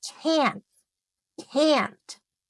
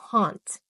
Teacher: In American English, that a sound is long and open.